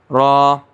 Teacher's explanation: سرا، قریب سرا زبان، سرا یعنی کہ نوک زبان کے قریب جو پشت ہے وہاں سے وہ تالو سے ملے گا